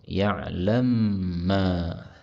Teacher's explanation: mim ketemu mim, boleh idgham